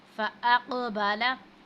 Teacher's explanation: क़ौफ़ साकिन है तो इस पर हमने क़लक़ला करना है। यानी कि जब हम क़लक़ला करते हैं तो मखरज में थोड़ी सी जुम्बिश सी पैदा होती है।